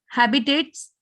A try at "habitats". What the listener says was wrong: Not tates. Habitats.